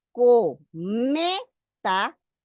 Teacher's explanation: En cometa, no tengo el signo ortográfico, pero si yo busco dónde está la mayor fuerza de voz, cometa, inmediatamente detecto que en la penúltima sílaba, que es la me, tengo esa mayor fuerza de voz. Última, penúltima, tengo una palabra grave.